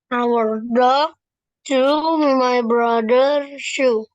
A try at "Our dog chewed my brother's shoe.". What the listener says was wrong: Chewed. Bacanya chewed. Ada bunyi D-nya.